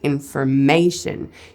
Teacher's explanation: You can also hear that the first syllable also has a bit of stress on it, but it's not quite as much as that 3rd syllable. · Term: strong stress